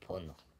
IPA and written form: bɔno (bono)